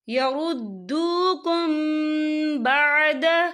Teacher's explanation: یہاں میم ساکن ہے، میم ساکن کے بعد جو ہے با آ رہا ہے، تو یہاں پر اکفا شفوی ہوگا اور ہم یہاں غنہ بھی کریں گے، اور غننے کی مقدار جو ہے 2 سے 3 سیکنڈ ہوگی۔